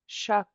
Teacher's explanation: So, the W just lets you know round your lips as you breathe out the K and it'll make a unique sound